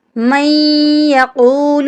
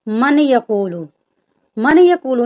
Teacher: ہم نے میم کو یا کے ساتھ ملانا ہے، نون کا ہلکا سا ساؤنڈ آنا چاہیے۔ جب میم کو یا کے ساتھ ملائیں گے تو یہاں پر ادغام ہو رہا ہے، یعنی ایک حرف جو ہے وہ دوسرے حرف میں داخل ہو رہا ہے۔